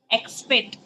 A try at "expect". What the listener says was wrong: तो फिर आप एक्सेप्ट क्यों पढ़ रहे हो? Read it again.